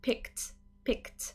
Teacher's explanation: when i add the e d ending to pick it becomes a t sound